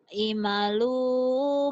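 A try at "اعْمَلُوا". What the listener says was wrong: Bukan imalu. Ihmalu. Bukan imalu. I'malu. Neken. I'malu. Ihmalu. Neken. Ke ain mati kan jadi kayak ngeden.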